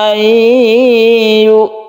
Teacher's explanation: nun mati bertemu dengan ya, ini kita sebut dengan idgham bi gunnah. Idgham bi gunnah itu dibaca dengung atau dipanjangkan.